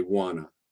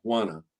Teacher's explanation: in special cases we even just take the T out we don't need the T we'll just get rid of the